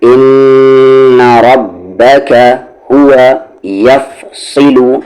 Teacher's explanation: را کی ساؤنڈ اوپر ہے، را ہیوی ہوگی